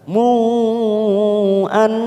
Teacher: nun yang bertasdid namanya bacaan guna, kita tekan 3 ketuk